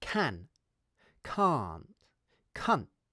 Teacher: The difference is in the length of the vowel. In 'can't' the vowel is long; in 'cunt' the vowel is short.